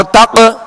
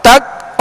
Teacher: تو تق یہ قلقلہ ہے اور تک یہ قلقلہ نہیں ہے